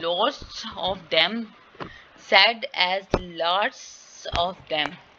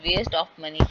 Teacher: ऑफ में जो वी का साउंड है वो डिसअपियर हो रहा है यहाँ पे, ठीक है। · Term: लॉस ऑफ फाइनल वी